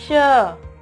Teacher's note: जब ये श का हम उच्चारण करते हैं श, तो तालु से आवाज आती है। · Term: तालु श